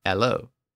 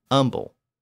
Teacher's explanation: This tendency of the H sound to disappear became a big class issue in England in the 19th century. Within certain stigmatized dialects, like the London Cockney accent, it became commonplace to drop the H sound.